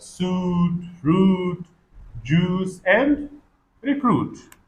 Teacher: is UI which is pronounced the first sound is o sound long back vowel lips rounded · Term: oo sound